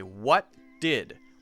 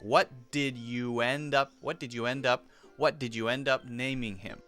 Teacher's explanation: So the T and the D are smashed together, and the whole sentence, he carries his voice through the rest of it. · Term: blended together